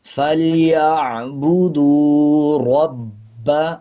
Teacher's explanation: آگے دیکھیں، با کے اوپر شد ہے، مضبوطی کے ساتھ پڑھیں گے. را کے اوپر زبر ہے، را کو موٹا پڑھا جائے گا